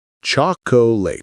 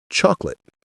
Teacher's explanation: That middle O disappears entirely. We don't say choco late. We say chocolate. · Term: 2 syllables